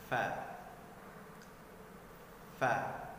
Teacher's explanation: Di sini sambil berhembus dikarenakan huruf fa sifatnya mahmus · huruf fa tempat keluarnya adalah gigi seri atas kita bertemu dengan bibir bawah kita